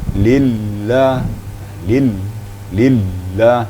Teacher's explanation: Kalau lam tu sifatnya inhiraf. Inhiraf tu ada sedikit penekanan suara, ya. Lillah, lillah gitu.